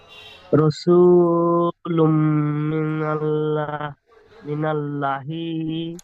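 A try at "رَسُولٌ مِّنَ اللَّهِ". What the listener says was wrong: লা নয় ল। আল্লাহ শব্দের পূর্বে নুনের উপর যাবার এসেছে, ল হবে। মিনাল ল খাড়া জবর একাই টান দিয়ে বলেন। হ্যাঁ, এখানে রসুলুম মিনাল্লাহ, এই ল লামের উপর খাড়া যাবার রয়েছে আল্লাহ শব্দের। এই ল একালিপ টান হবে, হা টান হবে না।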